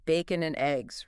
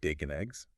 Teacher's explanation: The and practically disappears. It's all blended together. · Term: connected speech